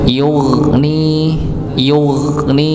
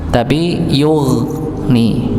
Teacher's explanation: Jadi huruf gha ini bukan tertahan, juga bukan dipantulkan, tapi dialirkan, nggih, dialirkan.